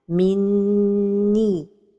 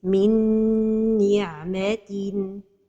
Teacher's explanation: the right pronunciation is to give time to the ghunnah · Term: complete idgham with ghunnah